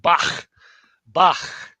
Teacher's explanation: Chet is like the CH in Bach. Bach. The guttural. Fricative guttural.